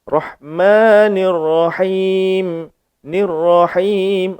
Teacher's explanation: Ra ni tebal sebabnya baris atas. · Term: Ra ni pun tebal